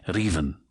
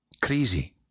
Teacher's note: whether the r precedes or follows the vowel, you're going to make that little tap or trill. The vowel that follows it is also a pretty key sound in say raven.